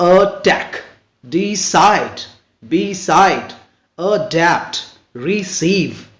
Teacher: तो आप देख रहे हैं कि सेकेंड सिलेबल पे जोर पड़ता है